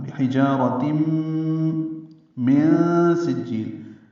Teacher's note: تنوین کے بعد میم آنے کی وجہ سے ادغام ناقص ہے مع الغنہ · نون ساکن کے بعد سین آنے کی وجہ سے من میں اخفاء کر رہے ہیں، نون کے آواز چھپا رہے ہیں